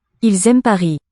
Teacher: we'll hear that final S when a vowel follows in the same phrase